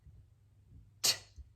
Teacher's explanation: Then you have the T, where you have the tongue coming up to that alveolar ridge behind the upper teeth